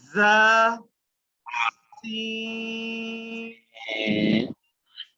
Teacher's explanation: when we pronounce a za, sin, there may be a sound of whistle, okay? And swad, it is to be pronounced bit thicker, in a thick manner.